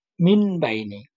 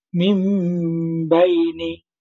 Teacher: আমরা মিম দ্বারা পরিবর্তনও করব, গুণনাও করব।